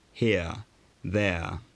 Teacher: For lower class speakers, the tongue was slightly lower, here, there.